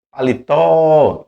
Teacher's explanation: Então o tó vai ficar, a tônica vai ficar mais forte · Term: sílaba tônica